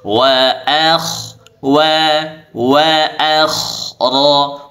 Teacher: k sukun sebelumnya fathah maka dibaca tebal